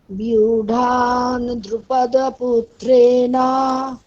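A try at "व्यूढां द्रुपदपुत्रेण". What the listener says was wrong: মানে বিউঢাম, ওটা আপনি বর্গীয় ব বলে দিচ্ছেন, ওটা হচ্ছে অন্তস্থ ব, সুতরাং ওটা বিউঢাম নয়, ওটা বিউঢাম।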